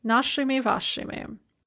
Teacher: the plural ending will be an unstressed ими